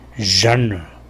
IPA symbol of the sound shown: ʒ